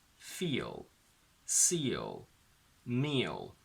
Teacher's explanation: We don't say f, E, L, so feel, but we get a bit of an extra O in the middle